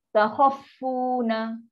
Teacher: Kha ni dia nak pergi kat fa. Tapi dia ada tekan, lebih seolah ada sabdu lah.